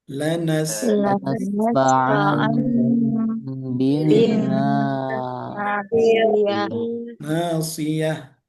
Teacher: Tapi ada tanwin bertemu dengan huruf ba. Bunyinya sama dijadikan huruf mim.